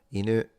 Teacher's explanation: the word for dog is inu. It goes up. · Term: pitch accent